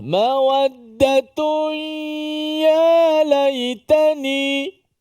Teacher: Tanwin bertemu dengan ya, hukumnya idgham ma'al gunnah.